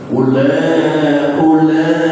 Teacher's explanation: Walaupun di dalam kalimat ulaika ada wau yang mati itu tidak boleh dibaca panjang. Tidak boleh dibaca ula, tidak.